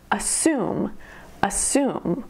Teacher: Assume has two syllables, and the emphasis is on the second syllable